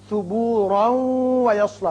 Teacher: را کی تنوین واو سے ملے گی، ادغام غنے کے ساتھ ہوگا